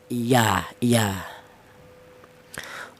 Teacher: huruf ya keluarnya huruf berasal dari tengah lidah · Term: huruf iya